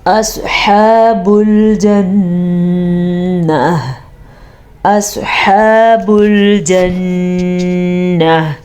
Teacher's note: سواد کو ہم نے پر پڑھا، سواد حروف مستعلیہ میں سے ہے. ہا کے تلفظ کا دھیان رکھیں گے کیونکہ ہا اگر ہم صحیح مخرج کے ساتھ نہیں پڑھیں گے تو یہ ہا بھی بن جائے گا، خوا بھی بن جائے گا اور لفظ غلط ہو جائے گا.